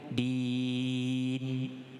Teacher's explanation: Sampai tak bunyi nun. Bunyi nun tapi jangan ada dengungnya. Din. Cukup.